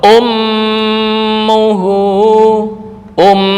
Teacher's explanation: ummuhu um langsung masuk ke hidung khaisyum